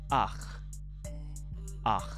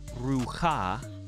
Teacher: Furtive Pathac is simply when you have a Pathac at the end of a word underneath either Chet or Ayin. And instead of pronouncing the Chet first so that it sounds like Cha, you invert it.